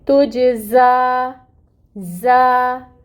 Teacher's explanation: یہاں پر ہم نے زا کو 2 حرکت کے برابر لمبا کرنا ہے، آپ یوں سمجھیں کہ زا کے اوپر کھڑی مد ہے تو اس کی مقدار ہوگی 2 حرکت کے برابر، اور زا میں صفیر بھی ہوگی یعنی سٹی بھی لائیں گے اس میں